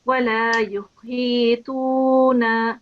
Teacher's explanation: make sure that you do prolong for 2 seconds again here, because we've got the ya madda, the ya being preceded by the kasra.